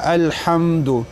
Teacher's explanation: میم چې دی دا ادا کیږي د دواړو شونډې چې یو ځای شي حم او په دې کې اظهاري شفوي تاسو ته مې ویلو